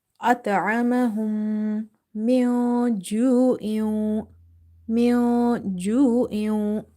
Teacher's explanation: So in the word min ju'in, I have hidden the sound of noon sakin. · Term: ikhfa